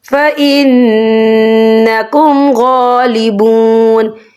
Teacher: اور غین کے اوپر کھڑی حرکات ہے تو یہاں 2 یا 3 عدد کے برابر کھینچ کے پڑھا جائے گا · تو ہم یہاں اظہار کریں گے، ہم اسے بنا غننے کے پڑھیں گے